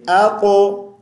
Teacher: क़ा साकिन है, मोटी आवाज़ से पढ़ेंगे और क़लक़ला भी करेंगे।